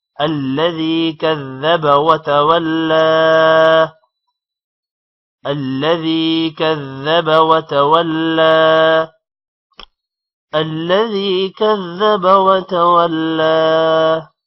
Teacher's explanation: کذب ذال پر شد ہے، تھوڑا ٹائم دیں گے. وتولى لام پر کھڑی زبر ہے، تھوڑا سا لمبا کریں گے